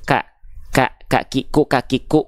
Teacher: mulai keras Nih langit-langitnya kalau belakang banget ini langit-langit lunak nak Kaf itu perbatasan antara langit-langit lunak dan keras